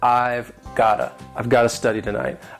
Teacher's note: Americans would tend to use the flap T which makes it sound like gotta